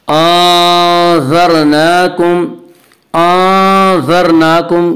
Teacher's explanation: आज़रनाकुम के रा को पुर पढ़ेंगे।